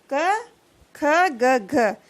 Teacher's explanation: कंठ या कोमल तालु से उच्चारित होने वाली ध्वनियां